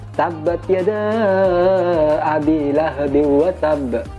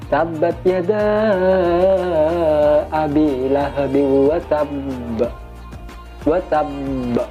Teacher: Yang benar qalqalah akbar ditahan dulu baru diucul.